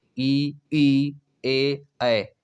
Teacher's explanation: इसके उच्चारण में जीभ का अगला भाग कार्य करता है। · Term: अग्रस्वर